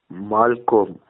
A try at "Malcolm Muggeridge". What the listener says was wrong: Malcolm. The co is not co, it's ka. Malcolm Muggeridge.